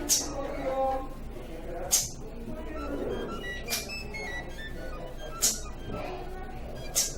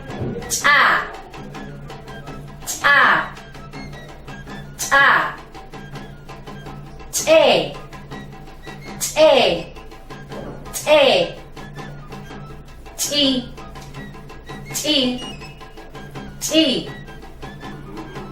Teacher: Comenzamos con la che glotalizada y su punto de articulación. Esta grafía, su sonido fonológico es palatal. Por lo tanto, se articula de la siguiente manera.